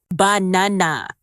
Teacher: in the word banana, the stress is on the second syllable, banana. If you put the stress in the wrong place, it can sound strange, even if your pronunciation of the letters is correct.